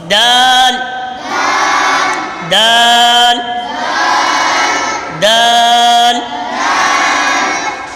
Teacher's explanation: زبان کی نوک اور اوپر کے دانتوں کی جڑ، زبان کی نوک اور اوپر کے دانتوں کی جڑ، جب زبان کی نوک اوپر کے دانتوں کی جڑ سے لگتی ہے تو پھر دال ادا ہوتا ہے